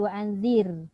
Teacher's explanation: Ra baris bawah bacaannya nipis.